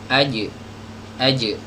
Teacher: Huruf jim keluar dari lidah bagian tengah ya, dinaikkan, diangkat sampai nempel ke langit-langit. Dan hati-hati, huruf jim ini punya sifat qalqalah ya.